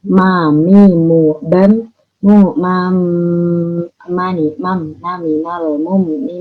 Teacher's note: Mim itu juga dua bibir seperti ba.